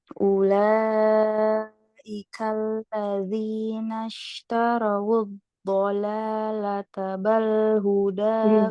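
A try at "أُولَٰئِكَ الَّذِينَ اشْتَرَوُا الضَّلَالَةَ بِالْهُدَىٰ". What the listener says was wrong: Bil bukan bal, bil huda. Bil.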